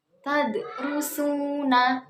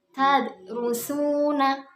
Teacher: huruf dal ini sukun atau mati, maka bacanya itu dipantulkan, bukan tadrusuna, bukan seperti itu, tapi dipantulkan dan memantulkannya itu setengah atau sedikit. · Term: qalqalah sughra